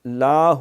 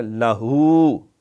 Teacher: ہے وہ پازیٹیو بن جاتا ہے، تو لاہ نہیں کرنا، لہو، ہو کو لمبا کرنا، لام کو لمبا نہیں کرنا